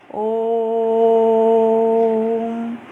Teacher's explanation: plutaswar, they are taking more than 2 matra